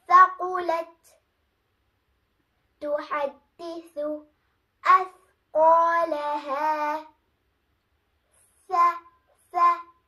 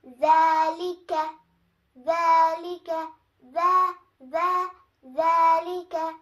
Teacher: The exit for these three letters is tip of the tongue touching the edges of the upper front teeth.